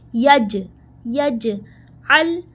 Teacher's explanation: جیم کے اوپر ہے ساکین، یعنی جیم پہ ہم قلقلہ کریں گے، جیم کو ہلائیں گے